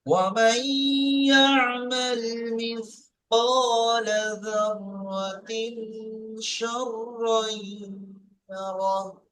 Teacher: হরফে ইকফার 15টি অক্ষরের মধ্যে শিন এসছে, তাই একে কি করে পড়তে হবে? গুণনা করে পড়তে হবে। একাধিক পরিমাণ গুণনা করে পড়তে হবে।